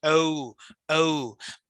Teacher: ও থেকে উ পর্যন্ত একটা গ্লাইডিং আছে